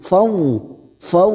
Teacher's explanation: fathah bertemu wau huruf layin kita lapurkan seperti bertemu dengan huruf u